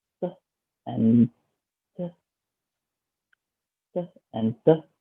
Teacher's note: both of them is placed at dental, which is at the teeth and tongue.